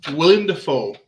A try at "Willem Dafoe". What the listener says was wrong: It's Willem, by the way. You said William.